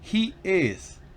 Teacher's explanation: La he es una I larga y la is es corta.